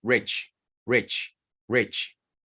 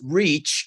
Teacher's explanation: es una muy corta y muy relajada. Rich, como entre I y E, pero no exactamente una de las dos.